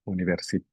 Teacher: it's accented on the final vowel so the stress Falls univers and I think that's about it